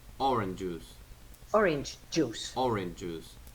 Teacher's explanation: you cannot apply non audible release for orange and remember that affricates keep their fricative release